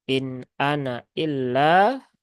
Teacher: jadi nunnya di situ terbaca pendek ya jangan panjang